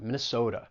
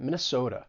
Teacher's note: If I were just to say it with a standard American accent, Minnesota, but with the Minnesotan accent, Minnesota. And you really have this pure O sound in many words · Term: long O sound